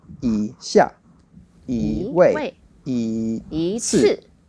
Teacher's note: The rule for that one was once you have E together with a fourth tone, then it changes to a second tone